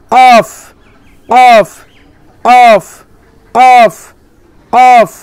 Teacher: এই কফটা জিভের গোড়া সোজাসুজি তালুতে লাগিয়ে